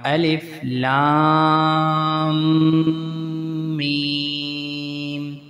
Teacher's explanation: میم پہ آپ نے ناک سے آواز نکالنی ہے جیسے غنہ ادا کر رہے ہوں۔ الف لام میم، لام اور میم کو لمبا کرنا ہے جیسے کہ ان کے اوپر مد ہے۔